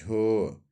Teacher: तालव्य महाप्राण घोष व्यंजन वर्ण का उदाहरण है